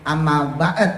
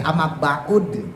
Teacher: Boleh dibaca amma ba'ud, boleh. Jadi huruf dalnya yang harokatnya doma dipindahkan ke huruf ain yang harokatnya sukun. Jadi bacanya amma ba'ud, boleh. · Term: nakolah